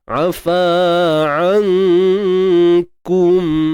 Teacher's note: Sembunyikan nun mati. Jangan sebut nun tepat pada makhrajnya. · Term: Ikhfa haqiqi